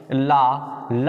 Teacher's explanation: अगर हम ला के उच्चारण स्थान की बात करें तो इसका उच्चारण स्थान आपका दंत है · ला हमारा पार्श्विक वर्ण है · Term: पार्श्विक व्यंजन